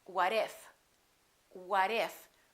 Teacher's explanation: We have a T between 2 vowels, and when the T is between 2 vowels, it becomes a fast D. So when we link it, we don't say what if, we say what if.